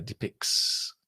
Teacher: we don't pronounce the T in depicts. It's not depicts. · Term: elision